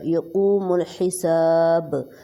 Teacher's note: با پہ قلقلہ ہو جائے گا ساکن ہونے کی وجہ سے